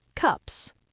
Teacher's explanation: Cup ends in an unvoiced P, so the plural is an unvoiced S, and the vowel is short, cups.